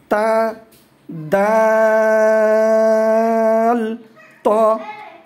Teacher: 11 নম্বর মাখরাজ, জিহ্বার আগা সামনে উপরের 2 দাঁতের গোড়ার সঙ্গে লাগিয়ে উচ্চারিত হয়